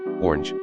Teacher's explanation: some Americans say orange with just one syllable